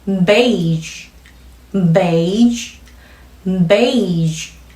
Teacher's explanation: 호흡을 계속 꺼내고 있던 그대로 성대 울림만 더해서 마무리요. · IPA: /ʒ/